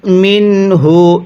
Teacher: নুন সাকিনের পরে ইজারে হরফ থেকে হা আছে। এজন্য নুন সাকিনটিকে স্পষ্ট করে পড়তে হবে। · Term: ইজহারে হরফ